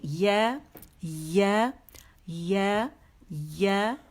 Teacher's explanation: تو زبان کا جو درمیانی حصہ ہے وہ جو اوپر غار ہے نا اس کے قریب ہو جائے گا, اس میں لگے گی نہیں آپ کی زبان یا کے لیے